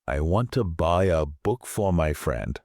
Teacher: Notice how the main beats, the content words, are want, buy, book, friend.